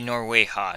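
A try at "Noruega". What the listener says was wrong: No, it's Norwega. It's a hard G. Yep.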